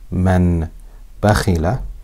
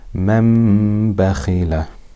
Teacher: It will be read as mam bakhila. The noon changes into a meem and it's read with ghunnah for two harakat. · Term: iqlab